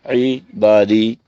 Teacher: عین کا مخرج وسط حلق، اور عنی یہ نون غنہ ہے، اور یہ ہم پڑھ چکے ہیں قاعدہ کہ نون مشدد ہوگا تو وہاں غنہ ہوگا، اور غنے کا طریقہ آپ نے پہلے سے سیکھا ہوا ہے۔